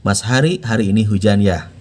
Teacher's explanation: Itu pakai H yang pangkal tenggorokan.